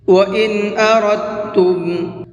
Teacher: وَإِنْ أَرَدْتُمْ أَن تَسْتَرْضِعُوا أَوْلَادَكُمْ فَلَا جُنَاحَ عَلَيْكُمْ وَإِنْ أَرَدْتُمْ، را کو پر کر کے پڑھیں گے اور را کو ڈائریکٹ تا میں ملائیں گے، یہ دال نہیں پڑھا جائے گا